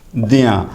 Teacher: तो द का उच्चारण आप जानिए दंत से, आ का उच्चारण कंठ से, और या का उच्चारण फिर देखिए तालु से और नासिका से।